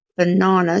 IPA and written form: bəˈnɑːnə (banana)